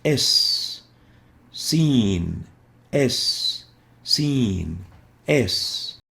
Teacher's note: The Sin articulates between the tongue and the lower incisor teeth, and it also produces a whistling sound as we pronounce it, and that's why we classify it based on the articulation into a lingual whistling letter as well.